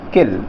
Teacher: तो ये आप देख पा रहे हैं कि आई के लिए ह्रस्व स्वर का उच्चारण होता है, यानी ई की आवाज़ को हम ह्रस्व स्वर में बोलेंगे, आधा यानी कम समय के लिए बोला जाएगा · जब इल हम बोलते हैं तो आई का उच्चारण को हम ह्रस्व बोल लेते हैं, यानी थोड़ा कम समय के लिए बोलते हैं